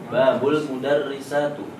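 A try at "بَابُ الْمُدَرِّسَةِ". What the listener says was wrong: Ingat kata kedua bagaimana? Nah, antum kalau masih domah kan masih salah. Babul mudarrisati. Babul mudarrisati.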